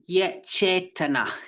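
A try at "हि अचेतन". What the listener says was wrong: That is absolutely correct. The way you did it just then is right, absolutely right.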